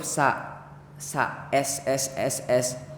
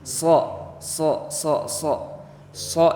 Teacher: kalau Sin itu tidak ada penebalan di bacanya tapi kalau huruf so itu agak ditarik ke belakang si lidahnya jadi biar tebal